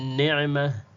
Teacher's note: ghuna hapa unayoisikia ni ghunna ya nuni ya pili